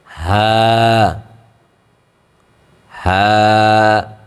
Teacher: হাটা একদম গলা থেকে মোটা করে বের হবে, চিকন করে না